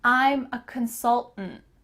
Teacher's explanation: might say that full word like i just did consultant or you could kind of swallow that last syllable